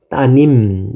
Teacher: 리을이란 자음이 없어졌으니까 자음이 바뀌었으니까 의문 변동이 있는 거죠